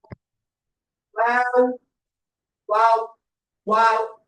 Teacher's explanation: வாவ் எங்க இருந்து வெளியாகும்னா, எங்களுடைய ரெண்டு உதடையும் நாங்க குவிக்கும் போது, குவிக்கிறேன்னு சொன்னா அது ஊசி வடிவில கொண்டு வரும்போது வாவ்.